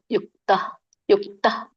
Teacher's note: ಯುಕ್ತ ಅಂತ ಮಧ್ಯದಲ್ಲಿ ವಿಸರ್ಗ ಇದ್ದಾಗ ಹೇಳ್ಬಾರ್ದು. ಅದೇ ಅಲ್ಪವಾಗಿ ಹ ಹೇಳ್ಬೇಕು. ಅಲ್ಪವಾಗಿ ಬರ್ಬೇಕು ಮಾತಾಜಿ.